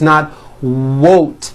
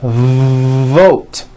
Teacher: you may be replacing your V sounds for W sounds